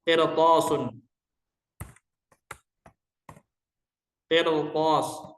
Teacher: Ini ra sukun. Sebelumnya kasrah. Hukum asalnya dibaca tarqiq. Tapi riwayat membacanya dengan tafkhim.